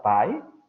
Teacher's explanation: La palabra blanco, que si no me equivoco se pronuncia pai, con el tono hacia arriba, puede decirse pai o puede decirse bai.